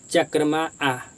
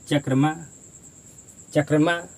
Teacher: जब इसका उच्चारण करेंगे तो लास्ट में हमारा स्वर नहीं आना चाहिए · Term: हलंत